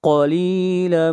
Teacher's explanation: قاف موٹا پڑھیں گے، حروف مستعلیہ میں سے ہے